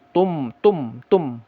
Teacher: Jadi nun menjadi mim begitu kira-kira ketika tanwin bertemu ba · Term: iqlab